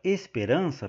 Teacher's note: a sílaba tônica na palavra esperança é a penúltima